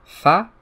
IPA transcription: f